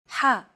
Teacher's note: You want to make an H sound, but with the throat constricted a little. Ha. One trick to produce this sound is to push your tongue as far back in your mouth as you can and then say the word hot.